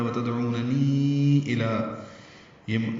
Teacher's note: یہ چھوٹی مد ہے، مد منفصل، 4 حرکات لمبا کیا